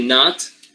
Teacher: Here the vowel doesn't get nasalized because it is occurring after the nasal, not before the nasal. So this one is not nasalized.